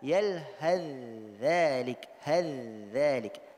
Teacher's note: Tha-nya sudah didghamkan ke dalam huruf dha dan hubungannya adalah tajanus.